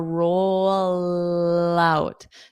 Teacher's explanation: It stays in that L position, roll out. So I'm saying lout, but you connect them together.